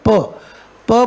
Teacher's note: You have closely और tightly brought the lips together · You suddenly release the lips. So what happens? The air come with a force. इसको अपन कहते हैं aspirated sound.